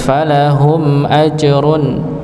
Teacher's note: dibaca jelas tidak didengungkan ya karena di siniahum mim sukun bertemu dengan Hamzah dihukumi sebagaizhar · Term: izhar syafawi